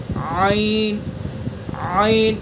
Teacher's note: عین جو ہاں کا مخرج ہے وہ عین کا ہے. وسط حلق یعنی حلق کا درمیانی حصہ ادا کریں گے.